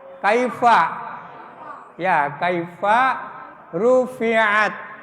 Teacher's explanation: Ini huruf khams ya. Fa, ta juga termasuk sifatnya memiliki hams yang sudah dijelaskan di sini, hamsidah, isfital dan infitah.